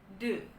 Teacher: cuma dia adalah voiced teman-teman karena ada getaran yang tinggi saat kita bilang de di tenggorokan